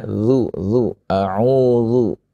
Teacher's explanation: zal dari gigi seri yang atas dengan apa? Dengan ujung lidah.